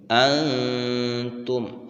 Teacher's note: انتم، نون ساکن کے بعد تا حروف اخفا میں سے ہے، لہذا نون ساکن کے اوپر اخفا ہوگا، اور اخفا ناک کے اندر آواز کو چھپانے کو کہتے ہیں